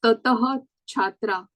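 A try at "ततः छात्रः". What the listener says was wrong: Tataha chhatraha. These breaking of the sandhi is actually quite simple because we know those are 4 forms of the visarga. We have to just make sure that visarga comes back.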